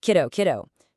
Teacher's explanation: And this right here is the key to that middle R sound. It's not some big, dramatic world R. It's just a super quick, really light tap. Try saying kiddo really fast.